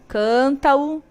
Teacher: Liga o A com o O direto, então eu não coloco ali a barrinha da cadência.